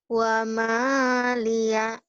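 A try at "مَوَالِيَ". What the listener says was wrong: Terbalik. Mawalia. Bukan wamalia. Terbalik.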